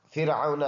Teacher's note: نرم سا را باریک ہے، او عون یہ واو مدہ ہے، فرعون کی جو واو ہے یہ واوی لین ہے نرم پڑھنے والا